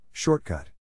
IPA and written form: ˈʃɔrtˌkʌt (SHORTCUT)